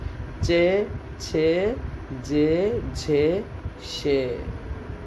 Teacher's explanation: तालव्य व्यंजनों का उच्चारण करते समय जिह्वा कोमल और कठोर दोनों तालुओं को छूती है।